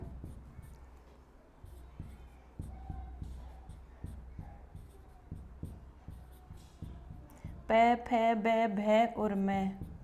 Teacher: अगर हम पै वर्ग का उच्चारण करना चाहते हैं तो हमें हमारे अधरोष्ठ और ओष्ठ, दोनों ओष्ठ आपस में स्पर्श करेंगे। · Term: ओष्ठ्य वर्ण